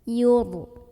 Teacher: Karena huruf sebelumnya yaitu yang ya berbaris di atas dhammah. Maka ra-nya dibunyikan dengan tebal, pangkal lidah kita naik. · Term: tafkhim